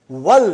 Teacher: See, now we are saying wal. We did not pronounce Hamza.